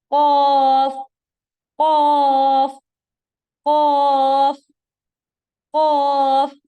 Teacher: جب زبان کی جڑ کوے کے قریب والے جو کوے سے بالکل جڑا ہوا ہے اس تالو سے لگے گی تو ہمارے پاس لیٹر قاف ادا ہوگا. ٹھیک ہے، آواز خوب موٹی کر کے قاف، قاف، قاف، قاف.